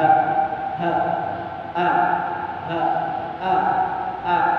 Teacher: tenggorokan bagian bawah atau yang paling dekat dengan dada atau hati. Pangkal lidah, keluarnya a dan h, hamzah dan h, h, a, h, a, tidak boleh a.